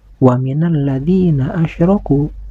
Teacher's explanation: Huruf ro yang berbaris fathah ini harus dibaca tafhim, yaitu dibaca tebal, karena huruf ro ini berbaris fathah.